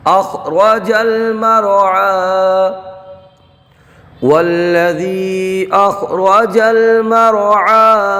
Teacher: آئیے اب آگے چلتے ہیں، ہم یہاں پر دیکھیے یا مدہ ہوگا۔ اب چونکہ حروف مدہ کے بعد حمزہ دوسرے کلمے میں ہے تو مد منفصل کا قاعدہ ہوگا، یہاں پر 2 ڈھائی الف کھینچ کر کے پڑھیں گے، یہ را کو پر پڑھیں گے۔